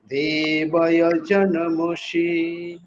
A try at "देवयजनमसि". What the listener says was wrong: जी ये सी जहाँ पर आया वहां पर शी आ गया दोनों जगह, तो सी ये यजनमसि इस तरह से, ठीक है।